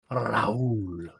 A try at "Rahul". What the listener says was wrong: No, you do it from the back of your throat. You're supposed to use your tongue. It sounds like you're rolling from the back of your throat. It's ra. Ra.